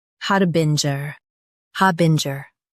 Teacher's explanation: ha bin jer harbinger ha bin jer harbinger Stress har and keep bin jer clear.